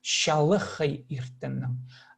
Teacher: Но тут не че, а ще. Фрикативное русское ще.